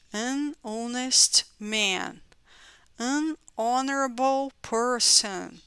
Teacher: se não tem som, esse H já começa no meu som de vogal, então tem que ser N.